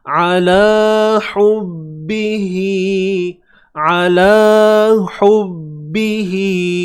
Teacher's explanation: Huruf ain baris atas sempitkan di bahagian tengah kerongkong kita. Ala la 2 harakat.